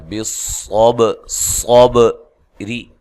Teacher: را کو باریک پڑھنا ہے، را کے نیچے زیر ہے۔